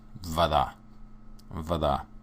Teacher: Notice that the syllable stress for voda is on the end.